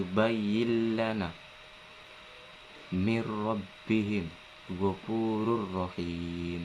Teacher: dan yang kedua idgham idgham bilagunnah idgam bilagunnah ini dibaca ketika huruf nun sukun mati atau huruf tanwin bertemu dengan huruf lam dan ro serta proses membacanya tidak disertai dengung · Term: idgham bila guna